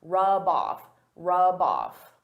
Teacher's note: I can take that b sound and connect it to the next word